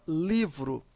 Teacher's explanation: A sílaba mais forte é li. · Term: sílaba tônica